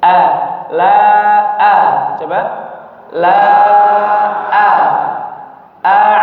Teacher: la a'udu huruf hamzah yang pertama jangan ee terpengaruh dengan huruf ainnya sehingga jadi ain semua.